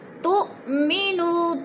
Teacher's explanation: تو پہ حمزہ ساکنہ ہے، جھٹکا دے کر پڑھیں گے، نو پہ وہ مدہ ہے، وہ ساکن سے پہلے نون کے اوپر پیش ہے تو وہ مدہ کو ایک الف دو حرکات کے برابر کھینچ کر پڑھنا ہے۔